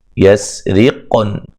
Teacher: پہلے قاف قلقلہ ہو رہا ہے، ٹھیک ہے، یسرقن، اچھا جی، تو قاف پہ قلقلہ کریں گے، را کو باریک پڑھیں گے